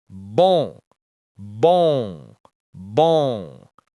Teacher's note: First, on and on. The sound is like the English O with the air out the nose. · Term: nasal sounds